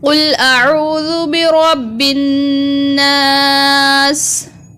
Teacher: را کو پر پڑھیں گے اور نون کے اوپر غنہ کریں گے